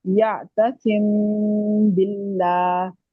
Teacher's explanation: थोड़ी देर मीम को हमने आवाज को रखा है नाक में और क्लियर नहीं किया इसको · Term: اخفاء شفوی